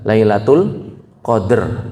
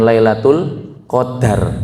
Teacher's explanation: dengan disukun huruf dalnya jadi yang benar itu adalah Lailatul Qadr bukan lailatul qadar